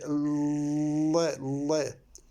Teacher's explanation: the air is on the side of the mouth, not in the center of the mouth. The air goes through, so the air is on the side.